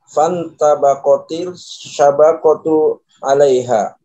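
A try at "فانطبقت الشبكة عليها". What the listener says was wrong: Bukan syabaqatu ya, syabakatu. Nah, fantabaqatis syabakatu 'alaiha.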